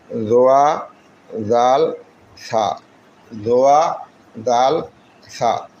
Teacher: জিহ্বার আগা সামনে 2 দাঁতের আগার সাথে লাগাই উচ্চারিত হয়